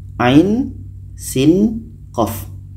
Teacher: Jadi ketiga-tiganya dibaca 6 harkat karena sama-sama ada tanda mat. Dan di sini juga ada dengung.